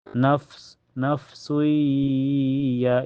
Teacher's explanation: Karena tanwin domah ketemu ya. Cara bacanya tanwin domanya dimasukkan ke ya dan ditahan sampai terasa ke hidung. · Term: idgam bigunah, idgham bigunah